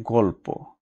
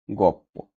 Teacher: এখানে পরের ধ্বনি আছে কি প, আর তার পূর্বের ধ্বনিটা হচ্ছে ল। এই ল প এর মতো হওয়াটাই হচ্ছে পরাগত সমীভবন। যেমন গল্প থেকে কি হচ্ছে গপ্প।